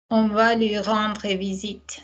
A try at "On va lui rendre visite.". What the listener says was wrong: Can I hear lui cleanly? No. Go again. Can we now remember that we don't need to say on va lui rendre visite just to make the vowels sing? The vowels can go en EI with no mouth.